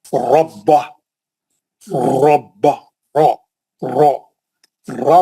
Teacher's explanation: मोटा पढ़ना, गोल मुंह से भारी पढ़ना। रा पे जबर है, रब्बा।